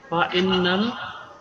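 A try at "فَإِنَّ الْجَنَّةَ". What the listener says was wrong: হানা তো এটা তা, আপনি অক্ষরগুলা খেয়াল করতেছেন না ভাই। ওটা তো তা, আপনি খেয়াল করে দেখেন একটু, ওটা তা। জান্নাতা। ফাইন্নাল জান্নাতা।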